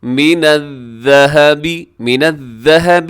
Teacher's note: ذال کی جگہ زا نہ پڑھ دیں